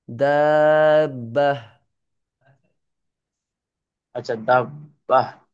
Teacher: এখানে গোলটাকে ওয়াকফ করার সময় আপনি হা করে পড়বেন।